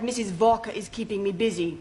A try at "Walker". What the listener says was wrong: Walker. W is pronounced W. Your employer's name is Walker.